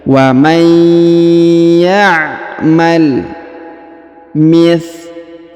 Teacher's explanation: Huruf qaf dipanjangkan 2 harokat yang ini karena di depannya terdapat alif